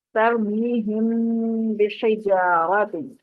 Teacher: نیم ساکن کے بعد حرف با آ جائے تو غنہ کے ساتھ اخفا کریں گے. ناک میں آواز جائے گی, وہی تھرتھراہٹ محسوس ہوگی جو پیچھے بھی ہم پریکٹس کر چکے ہیں کہ ناک پہ انگلی رکھتے ہیں تو آپ کو آپ کے دل میں تھرتھراہٹ محسوس ہوگی, وائبریشن محسوس ہوگی.